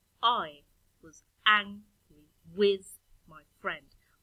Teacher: the first syllable is stressed, then you have an unstressed syllable, and then you have a stressed syllable and an unstressed syllable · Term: trochee